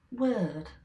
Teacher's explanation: he's getting down to up and word is down to low what I'm doing is getting low high low